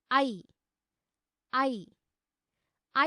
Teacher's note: ऐ ऐ ऐ वर्णस्य उच्चारणे अपि कण्ठतालुनोः सक्रियता अस्ति किल? अतः उच्यते ऐ वर्णस्य उच्चारणस्थानं कण्ठतालु इति।